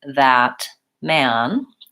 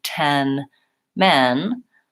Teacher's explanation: man is the most open and Men is more central